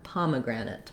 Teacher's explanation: the last A is going to have a really reduced vowel. So it's either going to sound like it or ut, pomegranate.